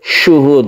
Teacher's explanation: shinnya ini memenuhi rongga mulut, kemudian haknya ini adalah di pangkal tenggorokan dan dikolkolahkan